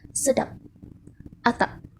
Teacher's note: P mempunyai alofon yang bunyinya tidak lepas jika terdapat pada suku kata tertutup